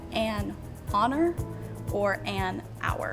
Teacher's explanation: you don't pronounce the H when you say honor, so you would say an honor or an hour